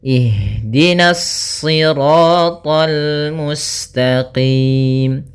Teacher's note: Kemudian hati-hati meskipun to-nya termasuk huruf isti' dan huruf ibtbaq sehingga dia menebal surat to-nya, akan tetapi karena kita bertemu dengan huruf lam maka dia lamnya tipis, jangan ikut tebal